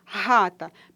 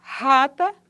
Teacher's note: esse fonema é fricativo glotal desvozeado. Isso significa que a articulação dele se dá aqui, ó, na região da glote, que não é possível sentir a vibração das cordas, não é?